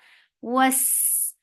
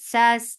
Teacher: sin will get sifa for akhawa, and it is light and it will get safir.